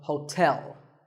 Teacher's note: there are two syllables ho and tell like the English word tell as in tell me the stress is on the second syllable